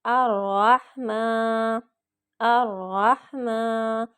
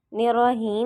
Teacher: رح میں ہا کو حلق سے نکالیں گے